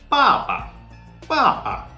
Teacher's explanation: neutral tone is relatively easy okay you just have to speak it you just have to say it no falling or rising of the voice